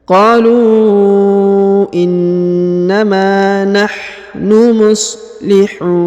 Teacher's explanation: huruf na di ujung disukunkan atau dimatikan.